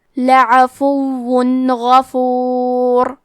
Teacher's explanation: غین حروف الاظہار میں سے ہے، اظہار کا معنی ہے ظاہر کرنا، اور کیونکہ تنوین کی اصلیت نون ساکن ہے تو ہم یہاں تنوین ظاہر کریں گے اور اسے نون ساکن پڑھیں گے اور بغیر غنہ سے یہ حکم کو ادا کریں گے · کلمت غفور میں غین کی ادائیگی حلق کے اوپر والی حصے سے ہے، غین حروف تفخیم میں سے ہے، تو ہم یہ حرف کو موٹی آواز میں پڑھیں گے۔ آخری میں حرف را کا حکم ہے تفخیم، تو ہم یہ حرف کو موٹی آواز میں پڑھیں گے۔